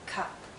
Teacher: It's a very short sound and also a very relaxed sound. If you were to hold this sound out, it becomes the sound we make when we're thinking aloud, when we don't know what to say.